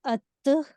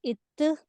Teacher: تا کو آپ حالت سکون میں پڑھتے ہیں تو وہاں ایک ایئر فلو ہوتا ہے، اور جو ہے تا کو ساکن کر کے اگر ہمیں اس کا مخرج جاننا ہے تو تا کو ساکن کر کے الف کے اوپر زبر لگا کر ہم اس کا مخرج جان سکتے ہیں.